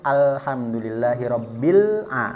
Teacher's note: ketika lam ini sukun jangan ada qalqalahnya ya. Dia tidak mempunyai sifat qalqalah seperti qof dan juga jim.